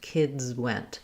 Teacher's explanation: I'm going to have a little more length on went.